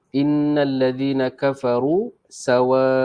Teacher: ro-nya tebal kerana ro berbaris hadapan